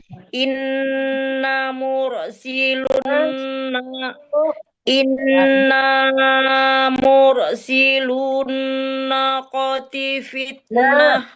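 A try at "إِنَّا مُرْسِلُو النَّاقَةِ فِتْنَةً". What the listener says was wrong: Nah, ada dua tuh pakai alif semuanya ya. Sesudah nah itu kan ada tegak, itu ada tangkai alifnya. Itu dipanjangkan bacanya, Bu. Inna mursilun naqati fitnatan lahum fartaqibhum wastabir.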